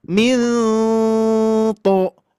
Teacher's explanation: huruf to ini dikarenakan tebal, maka harus ada mengangkat pangkal lidah. Tapi tetap posisinya di depan. Milto ya, beda ya.